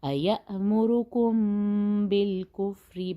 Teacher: میم اور با کے درمیان یہاں پہ ہم غنہ کریں گے